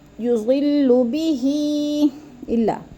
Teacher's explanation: حروف مدہ کے بعد حمزہ دوسرے کلمے میں آ گیا ہے تو ادھر مد منفصل، 4 الفی مد ہے